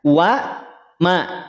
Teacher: Wa ma tipis, terhampar dia. Rahangnya terhampar, pangkal lidahnya terhampar, tidak terangkat. Wa ma, tidak wa mo.